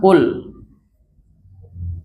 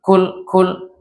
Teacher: Qaf itu sifatnya adalah jahar. Artinya dia berlawanan dengan sifat hams. Dia nggak boleh ada anginnya. Jadi nggak boleh kita sebut kul, tapi kita sebut ul, bersih.